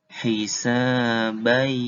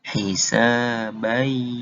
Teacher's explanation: setelah dileburkan, didengungkan juga. Jadi baca tasydidnya dilamain. Baca tasydidnya dilamain. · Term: idgham bigunah